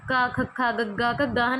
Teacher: ਇਹ ਸਾਰੀਆਂ ਕਿਹੜੀਆਂ ਧੁਨੀਆਂ ਨੇ ਕੰਠੀ ਧੁਨੀਆਂ ਨੇ ਜਿਹੜੀਆਂ ਕਿ ਕੰਠ ਤੋਂ ਉਚਾਰਨ ਹੁੰਦੀਆਂ ਨੇ